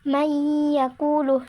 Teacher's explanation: nun sukun atau tanwin dimasukkan menjadi satu dengan huruf sesudahnya dan dibaca mendengung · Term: idgham bi gunnah